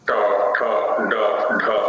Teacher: मूर्धा स्थानों में एकदम ऊपर है, केंद्र में, और उसके लिए जिह्वा का जो एकदम आगे वाला चोंच वाला भाग है, वो एकदम 90 डिग्री में खड़ा हो जाता है ऊपर जाकर के। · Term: मूर्धन्य